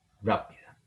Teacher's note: es una palabra esdrújula con el acento en la antepenúltima sílaba